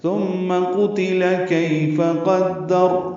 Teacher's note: تا نرمی سے ادا ہوگا، میم مشدد پہ غنہ ہے